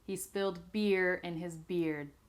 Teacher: I am cutting off the D here of beard because I don't really say beard.